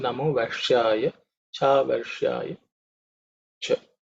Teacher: the Sh is with tongue raised up